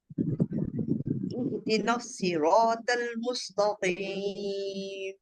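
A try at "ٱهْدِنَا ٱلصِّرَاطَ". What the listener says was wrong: ایہدی نون کو باریک رکھتے ہوئے صاد کو موٹا کرنا ہے. نصیرا نہیں کرنا، کیونکہ یہ نون موٹا نہیں ہے. ٹھیک ہے، نون موٹا نہیں ہے، صاد موٹا ہے، آگے موٹے ہیں الفاظ حروف جو ہے، لیکن نون کو موٹا. ایہدینا نصیرا نصیرا.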